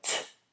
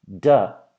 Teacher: when you make a noise like t, you'll see that you don't feel any vibration, whereas when you make the noise duh, you do. That's the easiest way to figure out if a noise is leanest or if a noise is fortis.